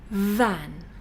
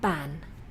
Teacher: the edge of the teeth the top teeth are touching the inside of the lower lip